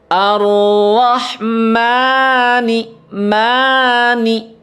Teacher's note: di Arrahman di mimnya itu ada fathah berdiri ya Nah di situ suaranya diayun ya